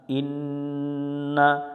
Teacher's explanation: হামজা নুন জের ইন, নুনের উপর তাসদিদ, এই নুনে গুণনা করা ওয়াজিব, নুন জবর না, ইন্না।